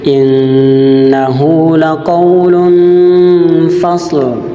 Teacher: Di ayat ke-13 ada satu hukum bacaan gunnah dan satu hukum bacaan tanwin, yang dimana dia gunnahnya nun yang bertasdid berharokat fathah dan dhamma tanwin lam yang bertemu dengan huruf fa, maka huruf fa adalah huruf ikhfa, maka nun matinya tanwinnya dibaca dengan samar, tidak jelas.